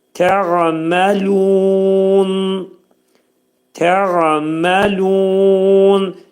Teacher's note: Təğməlunə kəlməsində tə incə samit, qayn boğazın ortasından çıxarır. Mə incə samit, lu incə samitdir və 4 hərəkə miqdarında uzadılacaq.